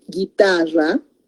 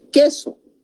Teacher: no se consideran diptongos, porque la U en este caso no se pronuncia, solo está a efecto de pronunciación.